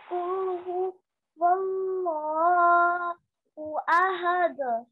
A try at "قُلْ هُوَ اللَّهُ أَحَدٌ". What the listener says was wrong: The other thing is you prolonged the ya over here. So again, on top of ya, we only have the short stroke of fatha. So don't prolong it for too long.